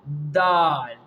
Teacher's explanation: The Makhraj of the Dal is the tip of the tongue